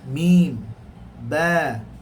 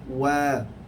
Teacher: Mim dan ba dalam keadaan tertutup, manakala waw dalam keadaan terbuka. Mim, ba, mim, maknanya kena sentuh dua-dua.